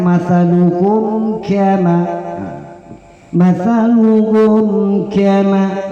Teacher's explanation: Mathaluhum kamathali, mati ketemu dengan ka, mathaluhum kama, mathaluhum kama, jangan dibaca mathaluhum kama, tidak boleh, karena di situ masih izhar syafawi. Mati ketemu dengan ka, hukumnya adalah izhar syafawi. Izhar artinya jelas dan terang.